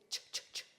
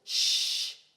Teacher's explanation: you only feel a puff of air in your mouth and no tense vibration in your throat. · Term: voiceless